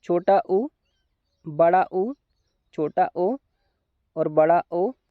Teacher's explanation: इन स्वरों को जब हम उच्चारित करते हैं तो हमारे जो ओट की आकृति हैगी वो वृत्त के समान गोल हो जाती है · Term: वर्तुल या वृत्ताकार